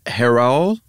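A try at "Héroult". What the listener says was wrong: I think you might actually say the T in that one.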